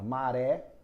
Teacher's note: a tônica tá na última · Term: oxítona